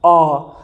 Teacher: अ बोलेंगे तो जीभ के बीच वाले भाग से अ निकलता है, अ। जीभ हमारी दबती है, अ, जीभ दब रही है ना, इसलिए दोस्तों सबसे पहले हम अ का अमात्रिक स्वर को बीच में रख देंगे।